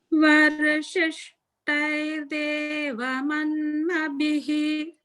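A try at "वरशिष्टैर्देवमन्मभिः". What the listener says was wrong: So the bhihi sounds more correct now. So only thing is just focus on pronouncing the ta mahaprana a little bit more strongly, and also the holding on air de. There's Thair Dev. So it's holding after a dirgha.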